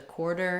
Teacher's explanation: in this particular word, quarter, we can drop the w sound and just move right to quarter.